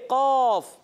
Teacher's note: क़ाफ तालु के सख्त हिस्से से अदा होता है।